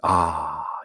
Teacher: 가장 열린 소리, 아 입이 열려있는 소리죠. 그것이 이제 우로 가면은 조금씩 닫히기 시작해서 그렇게 두 모음이 활짝 열려있는 아에서 우로 닫히다가 하면 완전히 닫히게 되는 것이죠.